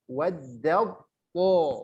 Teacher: Itu tulisannya waddatto. Tapi langsung dileburkan ke to.